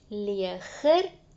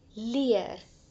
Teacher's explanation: ons hoor 'n g-klank in die Nederlandse woord wat ons nie in die Afrikaanse woord hoor nie